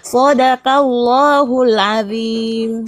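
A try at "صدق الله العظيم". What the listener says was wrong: Sodako, bukan sodakau. Sodaqallah.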